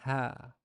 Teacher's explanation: it's twice longer than the short vowel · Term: long vowel